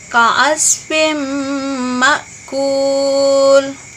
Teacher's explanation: kasratain bertemu dengan huruf mim, maka hukum bacaannya disebut dengan idgham bigunnah, artinya dibaca berdengung